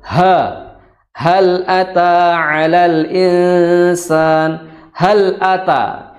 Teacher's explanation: kalau ha yang besar itu makhrajnya di kedua pita suara atau ditenggorokkan paling dalam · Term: ha besar